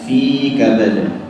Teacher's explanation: Fi, tidak ada suara yang keluar dari hidung.